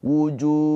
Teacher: Wujuh ha sukun. Awas ingat ha sukun mempunyai sifat rakhah. Ada aliran suara